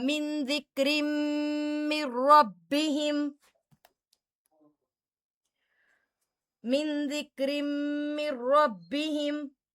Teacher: تنوین کے بعد میم مشدد آ رہا ہے تو غنہ بھی ہوگا · اب من ربہم میں ادغام بلا غنہ ہے کیونکہ یہاں پر تو کوئی غنے کا حرف ہی نہیں آ رہا نا، نہ نون مشدد آ رہا ہے، نہ میم مشدد آ رہا ہے، نہ تنوین آ رہا ہے، تو یہاں پر صرف ادغام ہوگا، غنہ نہیں ہوگا، ادغام بلا غنہ کیونکہ نون ساکن کے بعد رو آ رہی ہے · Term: ادغام مع الغنہ